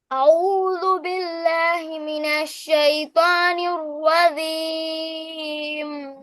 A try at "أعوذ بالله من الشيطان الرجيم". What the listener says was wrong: শাইতানির রাজিম শাইতানির রাজিম বিল্লাহি মিনাশ শাইতানির রাজিম জিমটা তোমার ভালো করে হয় না রজিম না রজিম রজিম